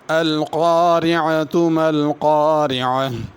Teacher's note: ایک تو القارعہ کے قاف کو پر پڑھنا ہے اور را کو باریک پڑھنا ہے۔ دوسرا، اگر القارعہ پہ رکنا ہو تو ہا پڑھنی ہے القارعہ، اگر ملا کر پڑھنا ہو تو پھر تا پڑھی جائے گی۔